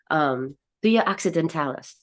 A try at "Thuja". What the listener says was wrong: you're pronouncing the J as if it's Spanish. It is a J, right? Like Thuja.